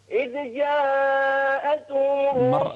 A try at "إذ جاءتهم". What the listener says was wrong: مرة ثانية إذ جاءتهم لا تقلقل الذال